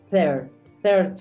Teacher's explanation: Recuerda que la r genera un Matiz y hace que la i se convierta en una e